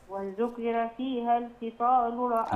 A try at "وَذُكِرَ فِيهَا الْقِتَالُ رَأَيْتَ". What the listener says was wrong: لا القي القي خلي بالك القاف المكسورة دي أدنى مرتبة في التفخيم، بس حضرتك ما تخليهاش كاف، ما تقوليش القي، القي دي غلط قولا واحدا على فكرة، هي القي يعني بالظبط زيها زي ايه؟ اهدنا الصراط المستقيم، دي الصح.